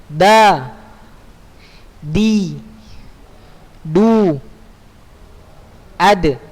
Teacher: Di punggung ujung lidah pada posisi pangkal dua gigi seri atas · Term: huruf dal